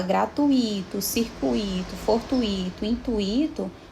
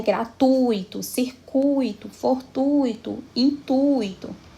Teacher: Em todas essas palavras, a sílaba forte vai estar no tui, mas especialmente no U.